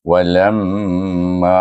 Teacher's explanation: Dah ada bunyi dengung lam dan ma dibaca dengan panjang iaitu mim bertasyd hendaklah dibaca dengan apabila sesuatu huruf bertemu ditasydidkan dengan huruf mim hendaklah dibaca dengan wajibul ghunnah iaitu wajib didengungkan dengan dengung dua harakat